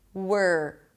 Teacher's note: fai-r-y'r-w' - tongue is down, 'wer' and then you pull it in again for the R 'works'. Now look, there is no O here, so you shift from the W to the are immediately